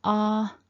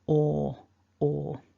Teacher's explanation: the lips are a little more rounded and sort of pushed forward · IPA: /ɔ:/